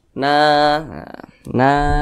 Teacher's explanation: huruf nun berbaris ke atas dia maka dibaca panjang na na Mad thi'i panjangnya dua harakat atau kira-kira dua ketukan